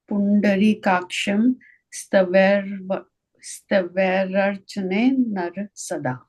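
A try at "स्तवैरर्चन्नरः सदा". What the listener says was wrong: Chain nara. So it's like a double na there, right? Chain naras sada.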